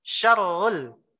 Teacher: Padahal seharusnya kan syarrul. Ro-nya yang ditekan. Ro-nya ada tasdid. Syarrul. Bukan sya-nya malah panjang.